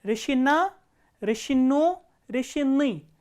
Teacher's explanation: As you can see, the stress has changed to the last syllable. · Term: stress pattern